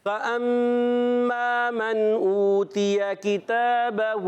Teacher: فأما میں میم مشدد ایک الف کا غنہ کریں گے، جلدی اس کو نہیں پڑھیں گے، غنہ پورا کر کے.